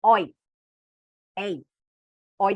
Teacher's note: Dessas 3 palavras, a sílaba tônica, na sílaba tônica a gente tem um ditongo aberto